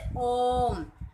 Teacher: प्लुत स्वर, इनके उच्चारण में ह्रस्व व दीर्घ स्वरों के उच्चारण से तिगुना समय लगता है। जैसे ओम। ये आपको मिड में एक वर्ड दिखाई दे रहा है, ये प्लुत स्वर है।